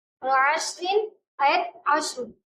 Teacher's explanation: اور عشر میں ہمیں رو کو پر پڑھنا ہے